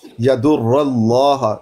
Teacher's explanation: لفظ اللہ سے پہلے زبر ہے، مفخم پڑھیں گے